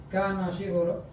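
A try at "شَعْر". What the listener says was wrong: Bukan syi'ru, sya'ru. Tapi kalau dipatahkan sya'ru rambut, tipis banget ya bedanya. Beda harokat, beda arti. Pakai shin, sya'ru wa syi'ru.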